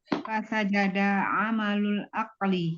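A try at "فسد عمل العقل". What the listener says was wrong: Ada huruf jim di situ. Apakah ada huruf jim? Apakah ada huruf jim di fasada?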